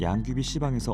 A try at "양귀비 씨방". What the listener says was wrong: 야, 그 발음을 꼭 그렇게 붙여야 돼? 씨방에서 이렇게 하면 양귀비